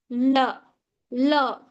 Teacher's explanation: So lateral, which means air flows around the sides of the tongue